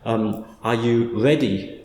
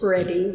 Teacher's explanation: if you go to certain parts of Britain, the R is almost like a W